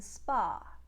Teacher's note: the uh sound as in cup and some becomes ah in hungarian as in spa